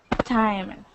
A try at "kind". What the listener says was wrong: All right, that is kind with a K at the beginning. Kind.